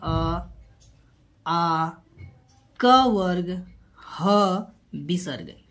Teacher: ये सारे वर्ण सबके उच्चारण कंठ से होते हैं